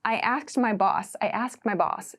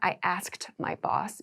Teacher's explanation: It sounds like I asked my boss, I asked my boss. So it's like the D sound gets very, very, very small.